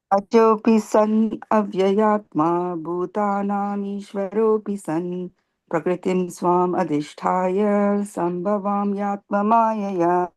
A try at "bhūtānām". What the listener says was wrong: Try to say bhūtānām, right? The H. Try to pronounce the H here also. Bhū and not bhūtānām.